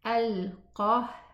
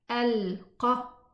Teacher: partial parting of the vocal cords, allowing friction causing the sound of the ha, but extra parting makes the sound vanish.